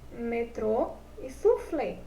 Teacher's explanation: classificadas em oxítonas paroxítonas e proparoxítonas oxítonas turmas só que elas palavras cuja última sílaba é a tônica